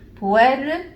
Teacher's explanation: It's a very soft tip of the tongue touch to the roof of your mouth.